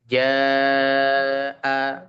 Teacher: Nah, panjangnya adalah 4 sampai 5 harakat. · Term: mad wajib